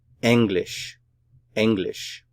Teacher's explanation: English English the syllabification for this word is and Lish English stress is here on the first syllable